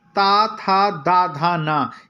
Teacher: ता था दा धा ना। ये जो 5 हैं ये हमारे दंत हैं। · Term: दंतत्य